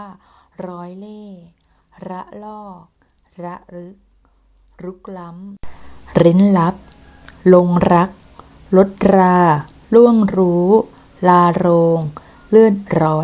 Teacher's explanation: คุณครูกระดกลิ้นชัดเจนไปหน่อยนึงเนาะ